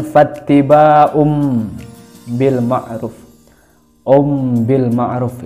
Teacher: Kemudian fattiba'um bil ma'ruf, bil ma'ruf itu bacanya iklab, karena domah tanwin bertemu dengan huruf ba, maka dibaca iklab, seolah-olah ba diganti dengan mim. Bil ma'ruf, ruf itu domah mat tabi'i.